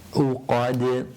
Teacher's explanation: the dal at the end of the verse, which is a qalqala again, making it echo